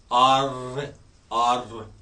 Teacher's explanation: टंग को आपने पैलेट से लगाना है और थ्रिल देनी · आर टंग ऊपर लग रही, थ्रिल कर रही